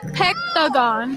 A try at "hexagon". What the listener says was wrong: She said hexagon, you're saying hectagon.